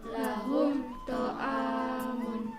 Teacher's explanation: Lahum ta'amun, enggak boleh dibaca mendengung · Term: idhar syafawi